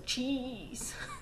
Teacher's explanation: a combination of a brief stop and then a constriction so it's kind of um a stop and then a hiss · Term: affricative